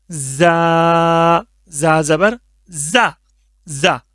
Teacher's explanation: इसको सख्ती के साथ पढ़ेंगे इसमें मतलब सीटी की आवाज एक तरह सी आएगी · اچھا، اس کے بعد ہو گیا زال، اس کو بھی پتلا کر کے پڑھنا ہے، زال، زال زبر را، را، اس کا ساؤنڈ ہوگا را، لائٹ کر کے، اور یہ ہو گیا زا، اس کو سختی کے ساتھ پڑھیں گے، اس میں مطلب سیٹی کی آواز ایک طرح سے آئے گی